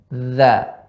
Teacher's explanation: Ujung lidah bertemu dengan ujung gigi atas. Dha. Kaidahnya ini huruf jahrun. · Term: huruf dha